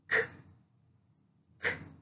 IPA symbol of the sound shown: k